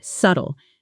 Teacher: Be careful with the pronunciation here. The B is silent. It's not subtel.